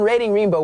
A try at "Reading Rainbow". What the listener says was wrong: It's reading rainbow, not you said rating rainbow. A little slower, and I think you'll have it.